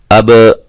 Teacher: جزم ہے. تو با حروف قلقلہ میں سے ہے، لہذا ہم اس کو ہلائیں گے